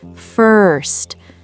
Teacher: Focus on that American R sound. Your tongue pulls back.